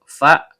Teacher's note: Fa huruf bibir perut bibir bawah bertemu dengan ujung gigi seri atas